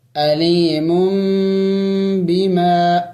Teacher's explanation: یہاں پہ دیکھیں تنوین ہے اور اس کے بعد با ہے، تو یہ قاعدہ یہ ہے کہ جہاں تنوین کے بعد با آ جائے، تنوین کے بعد اور نون ساکن کے بعد با آ جائے تو پھر وہاں تنوین اور وہ نون ساکن میم سے بدل جاتا ہے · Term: اقلاب